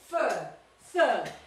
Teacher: es una schwa, fur, yes, y no suena la R tampoco